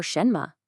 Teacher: the second syllable, mei, is a neutral tone. It's so light and quick and completely unstressed.